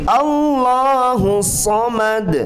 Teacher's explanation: Tidak ada bacaan yang ditahan 3 harakat, tapi kita konsentrasi fokus di ayunan-ayunan itu, di mad tabi'i atau kita sering menyebutnya mad asli ya. Bukan ditahan, diayunkan 2 harakat.